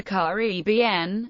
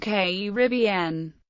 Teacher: The two most prevalent pronunciations of Caribbean are Caribbean, with the primary accent on the third syllable, and Caribbean, with the accent on the second